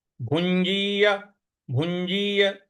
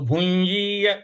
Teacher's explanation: प्रकार से बोलेंगे भ पर छोटा ऊ की मात्रा है और जो यहां अनुस्वार है उसका ञ का उपयोग करना है यहां पे ञ का उच्चारण लाना है